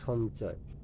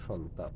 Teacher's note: ময়ের পরে যে কোনো বর্গীয় ধ্বনি থাকলে ম ধ্বনিটি সেই বর্গের নাসিক্য ধ্বনি হয়